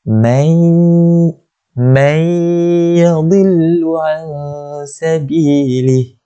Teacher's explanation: Dengung kita masukkan huruf nun mati tu ke dalam huruf ya. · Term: idgham bi gunnah